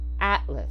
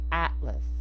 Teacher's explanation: The second A is being reduced to the schwa